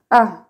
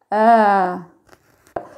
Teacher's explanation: On marque un coup d'arrêt. C'est ce qu'on appelle un coup de glotte. A, alors que le alif sans le hamza se prononce A.